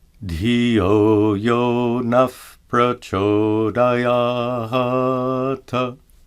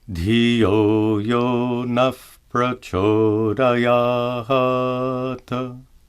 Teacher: Note that the visarga is pronounced as an F sound.